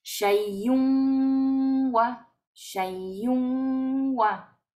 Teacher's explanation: Vamos desde la kasra de la hamza, desde la kasra hasta la wau y hacemos como si la wau tuviera un shedda.